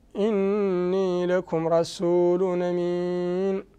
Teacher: نون هنا مشددة وحكمها الغنة